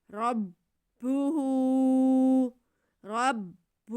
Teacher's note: آگے ہاں پہ الٹا پیش ہے، اسے ہم نے ایک الف کے یا واو مدہ کے برابر کھینچنا ہے۔